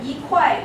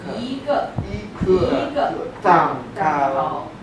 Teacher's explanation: A piece is the fourth tone.